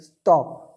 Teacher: in the word stop ta is pronounced with no puff of air and it is called unaspirated sound